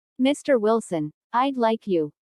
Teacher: Notice the rising intonation on Mr. Wilson, which is used to address someone. Listen for the D in I'd like.